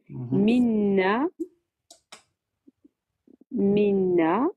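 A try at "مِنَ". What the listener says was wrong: Non, là, tu as mis tu as mis une shaed sur le noun là.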